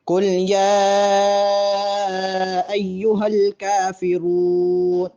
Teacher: قل میں قاف موٹا ہوگا اور یا کے بعد مد ہے، اس لیے یا کو لمبا کریں گے